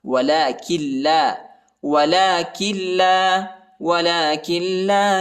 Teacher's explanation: کو تقریباً 1 الف کی مقدار تک کھینچنا ہے۔ ولکن لا، کاف کو لام کے ساتھ ملائیں گے، نون ساکنہ نہیں پڑھا جاتا کیونکہ لام پر شد آیا ہے ، کاف کو لام کے ساتھ ملائیں گے، کاف لام زیر